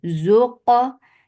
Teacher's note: qaf is majhura letter there is no flow of breath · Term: qalqala